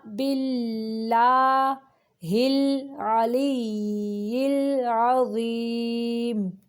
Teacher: یہ باللہ کا جو لام ہے یہ باریک پڑھیں گے کیونکہ لام کے پچھلے حرف کے نیچے زیر ہے